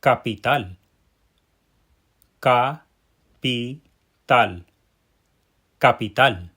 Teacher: that tonic syllable, that syllable that is the strongest, that gets the pow, is at the end of the word? We have to pay attention to stress that right syllable or we won't be pronouncing the word correctly.